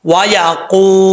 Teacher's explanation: واو ساکن سے پہلے پیش ہو تو واو مدہ ہوتا ہے. ایک الف کی مقدار اس کو لمبا کریں گے